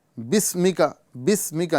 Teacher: यहां पर सीन की आवाज सीटी के साथ अदा करेंगे